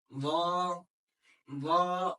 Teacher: जब हम लॉ को पढ़ते हैं तो लॉ को थोड़ा सा मोटा पढ़ते हैं। कैसे? लॉ, लॉ मतलब जो आपकी जबान है वो ऊपर की तरफ उठती है, पीछे से तालू की तरफ उठती है। · लौ का मखरज भी सेम ही है। जबान की नोक ऊपर वाले दांतों पे लगे तो लौ अदा हो जाता है।